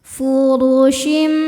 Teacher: huruf ro dibaca secara tafkhim karena ro berharakat di atas yaitu harakat dommah cara bacanya dibaca tebal